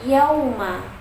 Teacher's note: huruf waw yang berharokat sukun didahului oleh huruf yang berharokat fathah, dibacanya panjang 2 harokat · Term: huruf lin